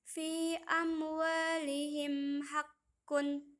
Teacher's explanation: seluruh huruf hijaiyah selain huruf hijaiyah Meme dan huruf hijaiyah Bah izhar berarti terang atau tidak berdengung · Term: izhar syafawi